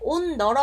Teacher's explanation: 그래서 디귿으로 대표음화가 되고 그 다음에 디귿은 뒤에 있는 니은, 비음의 영향을 받아서 똑같이 비음인 니은이 되는 거죠. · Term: 비음화